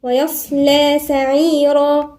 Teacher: هنا الياء مرققة والصاد مفخمة واللام مرققة، نخلي بالنا مش ويصلى لا، ويصلى سعيرا، والراء هنا مفخمة.